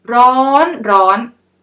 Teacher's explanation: when 2 words are at the high tone, so you should say the first word a bit longer than the second word, like ร้อนร้อน Okay?